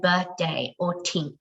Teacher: her th sounds often come out as a t